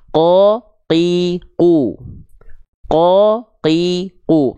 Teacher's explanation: huruf qf itu sifatnya jahr tertahan nafasnya · Pangkal lidah teman-teman nempelnya ke langit-langit paling dalam, biar nggak keluar nafas. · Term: qaf